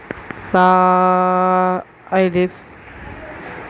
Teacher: دو دانتوں کے بیچ میں زبان کو دبا کر اندر کھینچتے ہوئے اس سا کو پڑھنے والے ہیں۔ سا الف، اسے زیادہ کھینچیں گے نہیں، زیادہ جھٹکا بھی نہیں دیں گے، جیسے سا ایسا بھی نہیں کہیں گے، سا یہ بھی نہیں کہیں گے، صرف سا الف۔